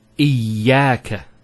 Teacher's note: Notice the ya gets a double vowel because of the Shaddah there.